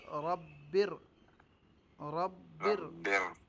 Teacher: پہلی باری موٹی ہوگی پھر دوسری باریک ہوگی